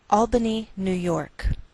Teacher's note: we treat New York as one word and we place more stress on the second part, York.